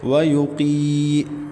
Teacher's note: قاف حروف مستعلیہ میں سے ہے، موٹا کر کے پڑھیں گے۔ ویقی یہ یا ساکن سے پہلے قاف کے نیچے زیر تو یا مدہ ہے، ایک الف تک کھینچیں گے۔